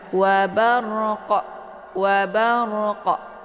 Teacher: huruf qaf ini yaitu dipantul dengan pantulan yang keras atau berat ya. Karena di sini huruf qalqalafnya terdapat di akhir kalimat, maka ini dinamakan dengan qalqalaf kubra ya.